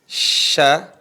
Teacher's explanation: Tengah langit dirasakan sudah nempel ke langit-langit tengah lisan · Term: huruf syin